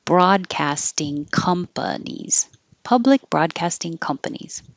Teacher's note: public ends with a K so hold the K without releasing the sound